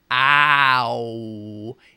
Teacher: So a sound like OW, ow, is made up of two sounds but is thought of as one. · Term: gliding vowel